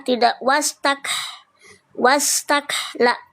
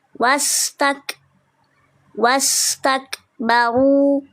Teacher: huruf kaf dia punya sifat hams ya, tapi lebih kuat di syiddah.